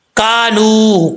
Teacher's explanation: کاف بریک ہے، ایک الف کی مقدار اس کو لمبا بھی کریں گے